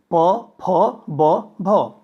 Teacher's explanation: अधर एवं ओष्ठ दोनों आपस में मिलते हैं और तत्पश्चात इन वर्णों का उच्चारण होता है, अतः इसे ओष्ठ्य भी कहते हैं।